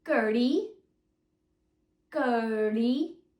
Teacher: tongue outward off the roof of your mouth like this so my tongue slightly touches the roof of my mouth before it's flicked outwards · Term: retroflex sound